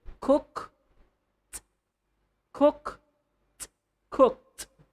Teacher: the last letter or the last sound of the word cook is an unvoiced sound, the k.